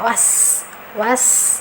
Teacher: Was, nah was ini ada sifat hamas mengalir, was ada sifat sofir mendesis, tajam ya suaranya